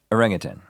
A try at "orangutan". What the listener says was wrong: That's not how it's said, I don't think. Put a G on the end of orangutan.